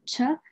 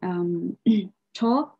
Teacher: the post alveolar aspirated affricate, cha, which occur only in the, again, initial position